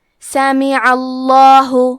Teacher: کلمت سمیعہ میں سین پہ زبر ہے، میم کے نیچے زیر ہے اور عین پہ زبر ہے، تو ہم یہ تینوں حرکات کو ظاہر کریں گے. عین کے ادائیگی حلق کے درمیان والی حصے سے ہے · عین کے ادائیگی حلق کے درمیان والی حصے سے ہے. کیونکہ عین پہ زبر ہے تو لفظ الجلالہ کے لام کا حکم ہے تفخیم، لہذا ہمیں حرف اللام کو موٹی آواز میں پڑھنا ہے